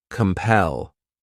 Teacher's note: The next verb is compel. This word has two syllables and the stress is on that second syllable